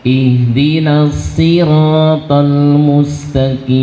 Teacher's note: Huruf na tipis, jangan jadi tebal karena menghadapi huruf shad yang dia tebal.